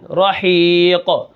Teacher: وقفن رحیق، یعنی یہاں پر شروع میں را کے اوپر زبر ہے تو ہم را کو موٹا کر کے پڑھیں گے